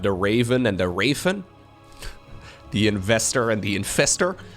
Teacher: in Dutch we don't really have much of a difference when it comes to the V and the F · usually they don't really make a distinction between the V and the F